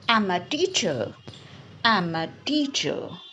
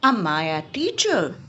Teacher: when I'm asking a question my intonation goes little bit up